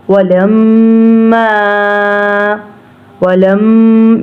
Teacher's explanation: इधर तशदीद है मीम के ऊपर, इसलिए थोड़ा गुन्ना होगा, नाक में से हम आवाज़ निकाल के पढ़ेंगे। वलम्मा वलम, ये लम इधर नाक में से आवाज़ निकल रही है, इसी तरह इधर गुन्ना करेंगे।